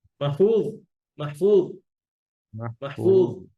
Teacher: য হচ্ছে ইতবাকের হরফ মোটা হবে অনেক বেশি আবার রখাও হবে